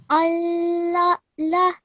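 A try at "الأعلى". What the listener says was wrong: Try to manifest this ayn sound a little bit, okay? Al-a'la. We need to work a little bit on this ayn sound because when we do a hamza, then it makes a slight jerking sound. And when we do an ayn, it's a slightly different sound. Al-a'la.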